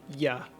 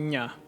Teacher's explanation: ya sound into nya and to do that we need to bring the body of the tongue the rest of the way up closing off air flow out the mouth and then retract the velum allowing air to escape through the nose